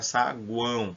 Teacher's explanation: o som saguão sai projetado parte pelo nariz